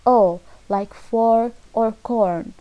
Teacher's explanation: long, mid, back, rounded vowel